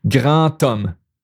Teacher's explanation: the D becomes a T sound